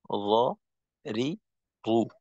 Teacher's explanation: জিহ্বার আগার পিঠ তার বরাবর উপরের তালুর সঙ্গে লাগাইয়া র, রি, রু। আর পিঠ বলতে গেলে উপরের দিক, নিচের দিক না।